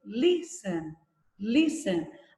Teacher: A sílaba tônica é lis e não ten